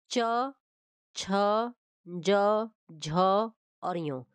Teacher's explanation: च छ ज झ और य यह जितने भी पांचों है पांचों व्यंजन है यह सब क्या आते हैं तालव्य के अंतर्गत आते हैं